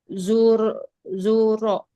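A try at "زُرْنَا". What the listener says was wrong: Nunnya mana? Zurna. Jadi ada nunnya, Bu. Zurna.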